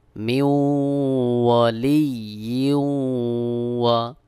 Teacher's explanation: এখানেও ইদগাম গুন্না, তানবিনের পরে ওয়াও ইদগামের হরফ, দুই জেরের থেকে এক জের উচ্চারণ করে ওয়াওকে যুক্ত করতে হবে